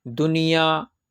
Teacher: گننا نہ ہو رہی، نہ کچھ ناک میں آواز چھپی جا رہی ہے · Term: اظہار